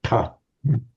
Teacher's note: the aspirated, unvoiced retroflex, ta